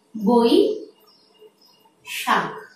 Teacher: ওই ধ্বনিকে উচ্চারণ করতে ও এবং হ্রস্ব ই এই দুটো ধ্বনির প্রয়োজন আসে। ঠিক তেমনি করে ও ধ্বনিটি উচ্চারণ করতে ও এবং হ্রস্ব উ এই দুটো ধ্বনির উচ্চারণ আসে। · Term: দ্বিস্বর